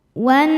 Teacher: Nun tasydidnya dihukumi gunnah musyaddadah karena nun bertasydid. Cara membacanya berdengung, tahan dengungannya